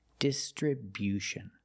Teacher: Make that y-yu sound after the b.